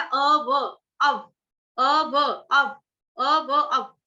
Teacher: तो अ के बाद आघात आएगा आधे व का, आधे व का आघात आएगा अ के बाद।